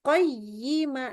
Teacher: Jadi naik nada tuh sampai hilang suaranya ya. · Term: nabr